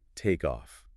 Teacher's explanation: In rapid speech or in singing, it becomes takeoff. That K sound has effectively moved over to start the next syllable.